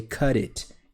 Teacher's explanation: you connect t with the i you know the consonant with the vowel and in this process you have a d sound cut it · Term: linking sounds